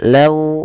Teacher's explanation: lembutkan lafal wau dan monyongkan sedikit untuk menyempurnakan dari makhraj huruf wau bibir kita ke depan